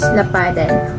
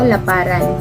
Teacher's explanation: Ang D ay karaniwang nagiging R.